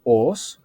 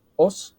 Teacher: Então, os, com O longo, os era boca, e os, com O breve, era osso.